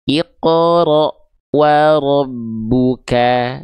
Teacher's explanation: Ketika sedikit senyum itu bunyi vokal A-nya akan terasa lebih tipis. Kenapa? Karena lidah kita akan terasa lebih rileks dan rongga mulut kita akan lebih terbuka. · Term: fathah vokal a